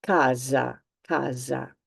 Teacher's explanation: One S between two vowels is pronounced Z